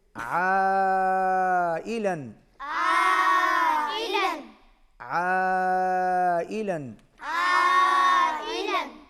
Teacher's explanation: آ کے اوپر پھر مد ہے، بڑی مد ہے، کھینچ کے پڑھیں گے